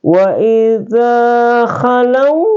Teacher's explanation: karena huruf waw sukun didahului oleh huruf lam berharakat fathah, maka dibaca panjang 2 harakat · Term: mad lain